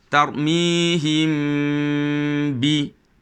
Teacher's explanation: Cara bacaannya ialah menyembunyikan bunyi mim serta dengung. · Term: ikhfa syafawi